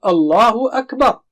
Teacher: It should be Allaahu akbar (with heavy lam), the Arabic way.